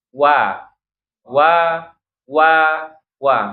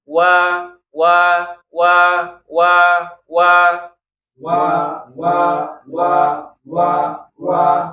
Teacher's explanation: Waw ini kedua bibir dia tempat keluarnya ya. Monyong dulu baru dibuka. Wa, justru dia harus monyong ya. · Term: huruf waw